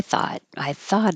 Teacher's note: if you don't have good air flow on thought it might sound like a t if your tongue is maybe behind the teeth in the T